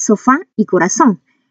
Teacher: Y como podemos ver, se tildan en la última sílaba y acá su fuerza de voz está en la última sílaba